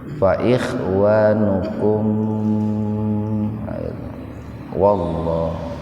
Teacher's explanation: Tapi kalau disambung mimnya dibaca idhar safawi, betul-betul dibaca jelas di bibir.